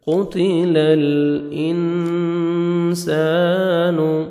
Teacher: نون ساکن کے بعد حروف اخفاء میں سے سین آ رہا ہے، یہاں پہ آپ نے نوز میں ساؤنڈ لے کے جانا ہے۔ قتل الانسان، الف مد ہے، سین کو آپ نے 1 سیکنڈ کھینچنا ہے۔